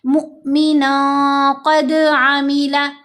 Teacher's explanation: दाल पर जो कलकला है कलकला कुबरा, क्योंकि दाल लफ्ज़ के आखिर में आ गया तो ये कलकला कुबरा होगा